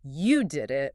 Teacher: if I say, you did it, where's the focus? The focus is on the action.